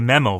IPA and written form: ˈmiːməʊ (memo)